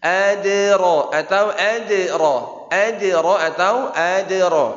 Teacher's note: Walaupun ini qalqalah sughra, qalqalah kecil di tengah kalimat tetap qalqalahnya harus jelas.